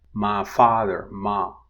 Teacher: This is an example of monophthongization in which the diphthong I is reduced to ah. We have the head and an off glide, which is I, so I, right?